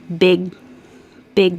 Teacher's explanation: The back of your tongue goes up and stops the air for big, big deal. So now my back of my tongue stops it for the G, and then it goes up for the D, deal.